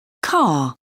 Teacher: some varieties of English don't pronounce the r making the last sound a vowel